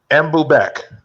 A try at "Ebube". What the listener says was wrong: Take away the ek, Ebube.